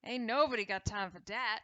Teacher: replace the th with a d